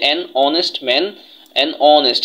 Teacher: তার মানে এইচ তার নিজস্ব উচ্চারণটা নেয় নাই, এটা অনুচ্চারিত হয়েছে।